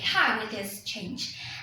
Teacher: the nucleus is the word change. Okay, it is the last accent of the IP, which starts with the word how and finishes with the word change. · the focus domain starts in how, which is the onset, and finishes in change, which is the nucleus.